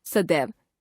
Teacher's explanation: हो जाती हैं जैसे सदा तथा एव शब्दों के मिलने से सदा शब्द की अंतिम ध्वनि आ तथा एव शब्द की पहली ध्वनि ए परस्पर मिलकर ए हो जाती है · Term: संधि